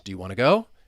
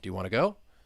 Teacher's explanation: notice with those yes no questions do you want to go that Rising intonation